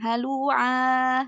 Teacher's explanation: Ainnya 2 harokat aja. Jangan kepanjangan.